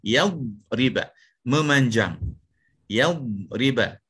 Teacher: Pada huruf dad ada satu sifat istitalah.